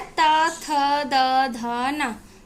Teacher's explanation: जो टा वर्ग होता है वो हमारा मूर्धा से इसका उच्चारण स्थान होता है, और जो ता वर्ग होता है उसका उच्चारण स्थान हमारा दंत